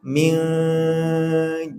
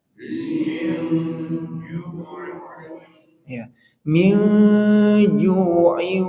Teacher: keduanya di sini Jim berarti suara samarnya di tengah Min kan Jim itu dari tengah lidah